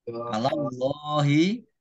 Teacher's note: Allahnya dibaca tebal karena harokat di depannya fathah